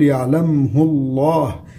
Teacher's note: اسم الجلالة الله سبق بضم، إذا لامه تفخم